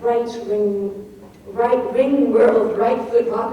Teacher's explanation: the whole poem is chock full of accented syllables like right ring world, right foot walk, which are hard to say and slow you down